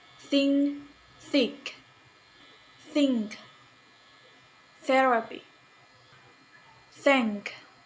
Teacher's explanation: voiceless dental fricative sound tha